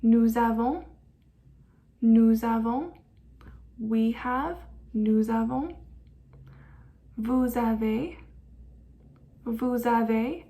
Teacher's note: I pronounced the S at the end of nous, vous, and il and elle plural, which usually we wouldn't do.